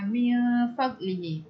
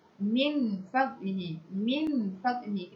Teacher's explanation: Al-ikhfa al-hakiki ni, al-ikhfa al-hakiki ni dia dibuang semuanya zat huruf nun, dibuang semuanya zat huruf nun, yang tinggal adalah sifatnya sahaja, iaitu dengung